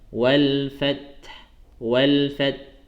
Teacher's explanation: Jadi disempurnakan dulu mati huruf ta, kemudian baru berikan sisa huruf ha.